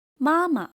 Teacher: The second ma does not keep its original tone, ma, but become neutral tone, soft and unstressed.